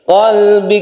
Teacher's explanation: kafnya mempunyai sifat hams jadi harus ada hembusan nafas atau meleleh